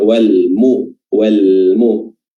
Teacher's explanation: huruf mim itu makhrajnya ada di asy-syafatan, bukan di al-lisan.